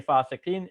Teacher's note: I'm dropping that last a because when we're stopping we're going to drop the last short vowel at the end